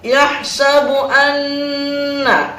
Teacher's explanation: ada nun sukun, ada nun bertasdid, disebut dengan gunnah, ditahan 2 sampai 3 harokat